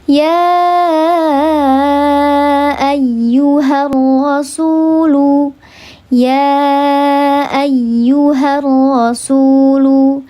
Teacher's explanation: Seperti aku dan kamu terpisah jarak dan waktu, maka mad jaiz munfasil juga terpisah. Antara mad dengan hamzahnya terpisah dalam 2 kalimat. Maka dibacanya dia 4 atau 5 harakat.